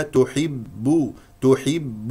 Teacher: ثم باء مضمومه نضم الشفتين فيها تحب تح حب وتذكر ان الباء حرف شديد مجهور لا يجري فيه النفس